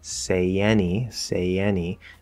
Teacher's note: do say any that's very clear separate say any say any there's a small y linking okay that's a basic linking rule